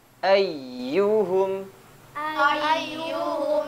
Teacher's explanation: ketika tasdid huruf ya-nya ya ada tekanan lebih tinggi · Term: tasydid huruf ya-nya